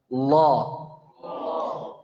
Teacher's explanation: lam lam yang dibaca dengan tafkhim atau taghlidh. Jadi besar suaranya. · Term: lam tebal